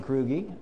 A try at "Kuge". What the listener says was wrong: Kuge. It's Kuge. There's no R in it.